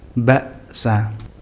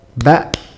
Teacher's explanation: ini enggak ada pantulannya sama sekali enggak sedikit enggak juga banyak jadi benar-benar aliran suaranya terputus hingga seolah terdapat Jedah satu harakat dengan huruf setelahnya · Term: hamzah